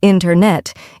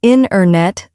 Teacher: the T sound gets softer or disappears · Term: dropped sounds